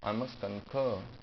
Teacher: you can also drop r or pronounce it extremely mildly, very very softly.